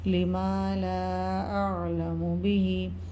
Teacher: مد کے بعد حروف ہلکی میں سے حمزہ آ رہا ہے، تو مد منفصل 2 سے 3 الف کی مقدار تک کھینچ کر پڑھیں گے